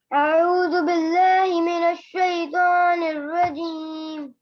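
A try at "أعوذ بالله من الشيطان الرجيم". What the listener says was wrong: सीधा बोलिए, अऊज़ु बिल्लाहि। जी यहाँ पे देखिए आखिर में लास्ट में मीम के नीचे जेर है रजीमी, लेकिन आप पढ़ रही हैं रजीम, ऐसा क्यों?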